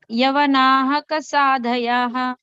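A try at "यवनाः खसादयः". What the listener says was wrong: Yeah, when you're saying together, you don't have to use the visarga. Yavanakha Sadayah, like that you can say.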